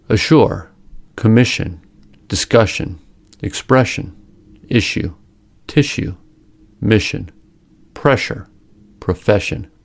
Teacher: The blade of the tongue is concave. Air is forced between a wide groove in the center of the tongue and the palatal area. The lips are kept slightly tense and may protrude somewhat during the production of the sounds. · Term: sh sound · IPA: /ʃ/